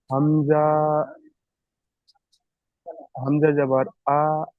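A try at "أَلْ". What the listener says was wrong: লামের উপর, লামের উপর সাকিন এসছে, লামের সাথে যুক্ত করতে হবে হামজা লাম জাবার আল।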